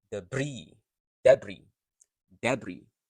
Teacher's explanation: So the word stress is on the second syllable.